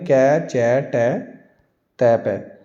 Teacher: कंपन भी नहीं हो रहा और मुंह से हवा भी कम निकल रही है। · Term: अघोष अल्पप्राण